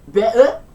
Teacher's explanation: the Cockney accent, which is characterised by glottal stopping, so that's where the letter T is pronounced with the back of the throat in between the vowels